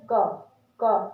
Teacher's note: आपको लगेगा कि हमारे कंठ से हवा निकल रही है, हमारे कंठ से आवाज आ रही है